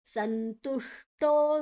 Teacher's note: ಶು ಷಣ್ಮುಖ ಶ ಅಥವಾ ಮೂರ್ಧನ್ಯ ಶ ಅಂತ ಹೇಳ್ತೇವೆ. ನಾಲಿಗೆಯನ್ನ ಮಡಚಿ ಹೇಳಬೇಕು.